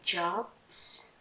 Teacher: bởi vì bạn này là b âm hữu thanh